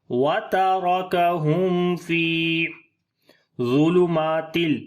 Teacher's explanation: گے، یہاں پر فا کو لمبا کریں گے، وترکہم فی ظلمات، ضا کو موٹا پڑھیں گے، حروف استعلا میں سے ہے